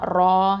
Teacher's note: ரா ஃபதா அலிஃப் சகீரா ரா, இது ஹெவியாக ஓதணும் தஃப்ஹீம்